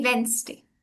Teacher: It's a day of the week >> and uh >> most people pronounce it as Vness day which is actually wrong because the D is supposed to be silent and it's and it's supposed to be Wednesday.